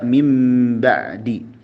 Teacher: Iklab itu artinya merubah nun sukun menjadi mim bunyinya. Yaitu ketika nun sukun atau tanwin menghadapi huruf ba.